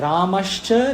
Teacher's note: पहले यह जो स है वह श होता है। दंत्य से तालव्य